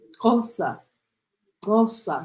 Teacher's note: Eles usam um certo estalo da língua no céu da boca.